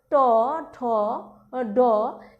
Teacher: জিহ্বার ডগা প্রতিবেষ্টিত করে মূর্ধা বা তালুর শীর্ষ অংশ স্পর্শ করে যে ধ্বনি উচ্চারিত হয়, যেমন ট, ঠ, ড ইত্যাদি। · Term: মূর্ধন্য ধ্বনি